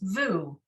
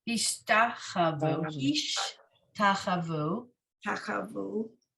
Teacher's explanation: The first vav we sound as a V sound, and the second vav we just say as the vowel u.